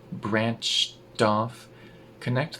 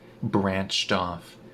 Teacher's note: Connect the d to the ah in off.